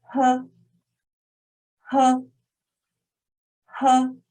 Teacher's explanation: So this sound is like H in him, but with a bit more fraction in the throat. So when pronouncing it, we can feel there is a puff of air coming through your mouth.